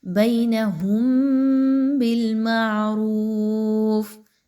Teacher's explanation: تھوڑی دیر آواز کو غنہ کرتے ہوئے پڑھیں گے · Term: اخفاء شفوی